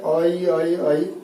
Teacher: एक ही ध्वनि है वो अ और ई के मेल से बनती है। आप उच्चारण करके भी देख सकते हैं, आई आई आई बार बार उच्चारण करेंगे तो एक ही ध्वनि आएगी। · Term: संयुक्त स्वर